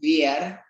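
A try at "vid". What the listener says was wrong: Beer. Es cerrado. Beer. ajá, lo que dijiste sonó como esto. Bear. No es bear, es beer. Bir.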